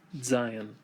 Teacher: Zayin has a sound mostly like the letter Z in English. Sometimes you can hear people pronounce it with a DZ sound